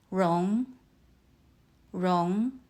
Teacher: Let's look at the tones. Rong uses the second tone. Your voice rises.